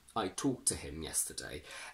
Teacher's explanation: We have kt plus another consonant, so the first t disappears completely.